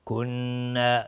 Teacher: این کنا، نون ساکن بعدش کاف، اخفای حقیقی. کنا، نون تشدیددار به مقدار 2 حرکت غنه داده میشه